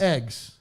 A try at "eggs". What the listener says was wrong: Eggs. It's a short E brand, like beg or not eggs. No, it's not a long A. It's a short E.